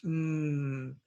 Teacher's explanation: you're using your lips but the air goes through the nose